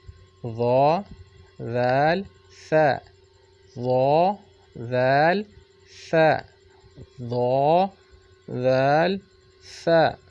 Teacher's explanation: ज़ुबान की नोक जब सनाया उलिया के किनारे से लगे तो ये तीन हरूफ अदा होते हैं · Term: हरूफ लिसाविया